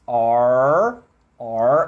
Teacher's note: Primeiro, o som do R do inglês, tá? Que é aquele som onde você tensiona a língua, mas você tensiona para trás. R, é a língua enrolada para trás, como se fosse um tapete, todo enrolado para trás, beleza?